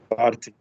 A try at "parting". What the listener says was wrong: But in English, you know, the R, they don't say the R, they say parting. They say parting. And the G at the end. No need to say parting. No need to say that. خلوا في رقة شوية في اللغة فيها رقة شوية. Parting.